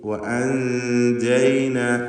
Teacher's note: നൂനിനെ അവ്യക്തമാക്കി ജീമിലേക്ക് ശബ്ദത്തെ കൊണ്ടുപോവുക. ഇതാണ് ഇഖ്ഫാ കൊണ്ട് ഉദ്ദേശിക്കുന്നത്.